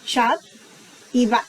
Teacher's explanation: Y por eso la B se duplica, la B con la dagesh es duplicada para terminar y cerrar una sílaba y abrir la siguiente